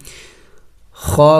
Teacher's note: خا موٹے حروف میں سے ہے اور کڑی زبر ہے، اس کو ایک الف کے مقدار لمبا کریں گے